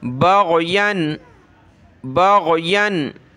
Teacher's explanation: इसकी जगह आपने गाफ बग़यन नहीं पढ़ना, गैन पढ़ना है गले से